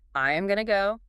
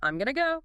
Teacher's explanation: The going to just collapses into a quick 2-syllable thing. Sounds way more fluid. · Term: reduced form